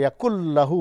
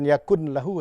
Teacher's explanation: nunnya itu harus hilang betul ya · Jadi yakul lahu, bukan yakun lahu ya. Langsung masuk lam ya. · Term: tanpa gunnah, idgham bi gunnah